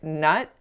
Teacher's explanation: I didn't say not with an open enough quality to my vowel I made it too closed